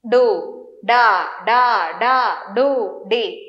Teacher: డు అన్నప్పుడు ఉకారం ఉకారంతో కూడిన డు తర్వాత తడ అకారంతో కూడిన ఇక్కడ హల్లు మారట్లేదు డ అనేది అలాగే ఉంది అచ్చుల వలన అది డు గా డ గా డి గా మారింది